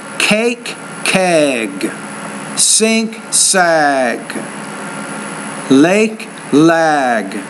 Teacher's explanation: notice how I'm making the one vowel longer when it precedes the G consonant